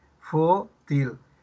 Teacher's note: fu es la sílaba tónica y til no